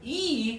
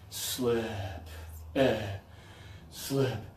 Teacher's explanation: with E, the sleep sound, your tongue is high in your mouth. E, and a little bit of air.